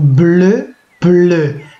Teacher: J'entends le L qu'on appelle une liquide en français, dans le cas de la phonologie, et j'entends la voyelle E ici, qui se matérialise ou bien par deux lettres ou par trois.